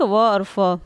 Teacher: दंतोष्ठ, दांत और ओष्ठ, ठीक, व और फ